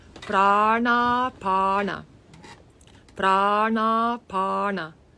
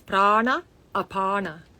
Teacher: When an a comes with another a, then it becomes a long a.